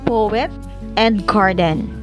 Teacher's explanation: one stressed syllable followed by an unstressed syllable